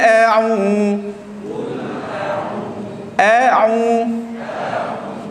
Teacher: Huruf a pada pangkal kengkung. A'u pada tengah kerongkong.